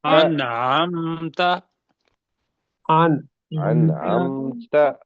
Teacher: نون کا اظہار کریں گے اظہار کریں گے، اور اس کو چھوٹا کریں گے، ان چھوٹا کریں گے، ان نہیں پڑھیں گے، ان نہیں پڑھیں گے، ان ان اور پڑھیں گے، عین ٹھیک، کو حلق سے نکال لیں گے۔